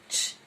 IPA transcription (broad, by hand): tʃ